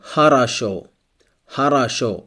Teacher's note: here only the last o is stressed the first and second o are not stressed so it's pronounced like a